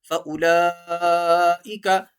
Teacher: لا کو تھوڑا کھینچیں گے، لمبا کریں گے کیونکہ لام کے اوپر کھڑی حرکت بھی ہے، بڑی مد بھی ہے.